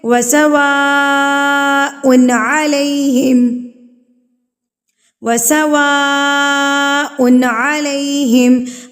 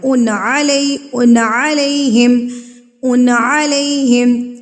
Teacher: یہاں پر نہ تو غنہ ہوگا اور نہ ہی اخفا ہوگا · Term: اظہار